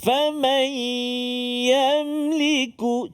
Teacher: So kat sini kita jumpa nun mati bertemu dengan ya. Dengung 2 harakat. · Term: idgham ma'al ghunna